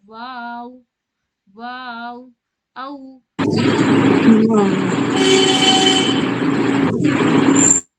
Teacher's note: वाव बोलते वक्त हमारी होंठ गोल होती है, सर्कुलर शेप की बनती है।